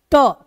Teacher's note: मुर्धा यानी बोलते समय हमारा जीभ जहां जाकर टकराता ट ट बोलते समय जीभ जहां पर टक्कर करती है उस जगह को मुर्धा बोलते हैं और वहां से ट ठ ड ढ उच्चारण होता है